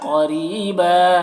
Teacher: قاف کو موٹا کر کے را کو باریک